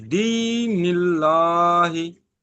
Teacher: আল্লাহ শব্দের ডান দিকে জের আছে, তাই আল্লাহর নামকে বারিক পড়তে হবে। বারিক অর্থাৎ লা।